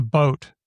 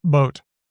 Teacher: It's ingressive B. Vietnamese has it. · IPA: /ɓoʊt/